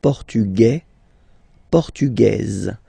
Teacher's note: s like that a and then the feminine form as okay it will be only in this z sound the difference between the masculine form and The Feminine form okay masculine portug you don't pronounce the S feminine form portuges